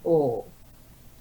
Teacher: we're rounding our mouth the tongue is a little bit lower it's not as high as it was for ooh